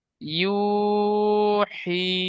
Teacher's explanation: জি, তার ফলে মানে ইয়া সাকিনের ডান দিকে জের এসেছে, ওয়াসাকিনের ডান দিকে জের এসেছে, ইয়া মাদ্দা হবে, ইয়া মাদ্দা হবে, ইয়া মাদ্দা হকে এক আলিফ পরিমাণ টান দিয়ে পড়তে হবে। ইয়া মাদ্দাকে এক আলিফ টান দিয়ে পড়তে হবে।